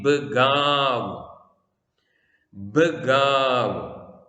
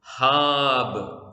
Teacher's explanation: അന്ത്യാക്ഷരം ബേത്ത്. അന്ത്യാക്ഷരത്തിന് സ്വരമില്ലാത്തത് കൊണ്ട് അതിൻ്റെ തൊട്ടുമുമ്പിലെ അക്ഷരത്തിന്റെ സ്വരം ദീർഘമായി ഉച്ചരിക്കുന്നു.